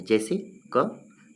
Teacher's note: तो जिन व्यंजनों के उच्चारण कंठ से होता है, इनके उच्चारण में जीभ का पश्च भाग कोमल तालु को स्पर्श करता है